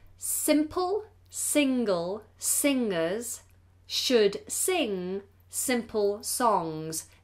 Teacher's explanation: This is a tough one because the ing sound, or rather the ng sound, has to be pronounced with the back of the tongue high and it becomes a nasal